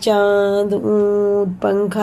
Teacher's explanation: اخفا کی مقدار ایک الف ہے، یعنی کہ ایک الف کے برابر ناک میں چھپا کر ہمیں پڑھنا ہے، جیسے چاند، اونٹ، پنکھا، ایسے اس کے نون کو پڑھتے ہیں نا ویسی۔